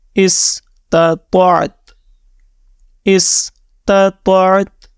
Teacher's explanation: اس تا کی آخر میں صرف آواز نکالنی ہے اپنے منہ سے، لیکن اس کو مکمل پیش کے ساتھ ریڈ نہیں کرنا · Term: وقف